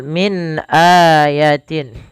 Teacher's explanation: min ada nun mati bertemu Hamzah maka dinamakan dengan bacaan izhar suara nunnya harus dibaca dengan jelas